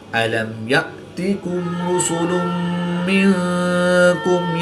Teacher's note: را پر پیش ہے تو را کو پر پڑھیں گے